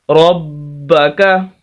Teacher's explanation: اور یہاں پر را موٹا ہے، موٹے حروف میں سے ہے، اس وجہ سے را کو موٹا کریں، کاف کو باریک